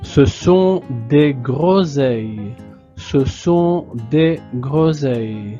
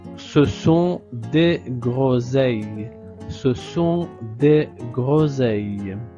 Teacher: le S est entre deux voyelles, la voyelle O et la voyelle e. Donc, on prononce Z.